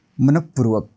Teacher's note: विसर्गाच्या पुढे प आणि फ आलं तर तोंडातून फुंकणीने हवा सोडल्यासारखा उच्चार करायचा आहे